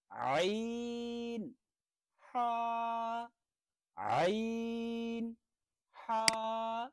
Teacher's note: দুই নাম্বার মাখরাজ হলকের মধ্যখান হইতে আইন এবং হা